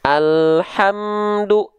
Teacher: jangan sampai nambahin ada bunyi vokal e di sini